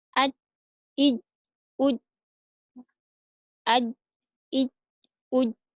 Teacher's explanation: Jadi yang menempel adalah tengah lidahnya. Tengah lidah kita menempel dengan, eee, langit-langit, bertemu dengan langit-langit, ya. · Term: huruf ja